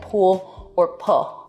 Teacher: L vocalization, so that's an L turning into a vowel in a word like pool or pull.